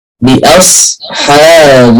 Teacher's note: بأصحاب، الهمزة مرققة، الصاد مفخمة، الحاء مرققة، الباء مرققة